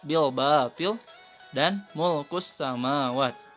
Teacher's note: berasal dari huruf ba dan mim, yaitu antara dua bibir dan tertutup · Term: Mim dan ba